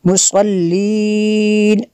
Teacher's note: ایسے نون جو ہے اس کے اوپر زبر ہے، وقف میں اس کو ساکن کر دیں گے۔